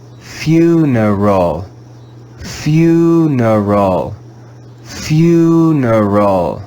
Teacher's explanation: english vowel u being read with the diphthong sound you you the english vowel e in this word is read with the sound of the schwa